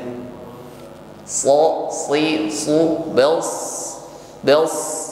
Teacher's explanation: Shad juga memiliki sifat rakhawah jadi jaroyanut ya suara hurufnya ngalir